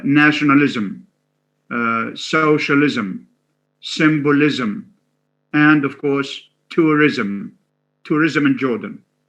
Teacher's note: although it has no schwa, but the transcription would be ism with a schwa after the z sound. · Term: suffix ism